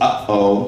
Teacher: it can be a glottal stop, which means a pause, such as uh-oh, there's a pause, and then you go on and you say the rest of the word.